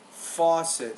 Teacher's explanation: And you have the word faucet. Stress on the first syllable.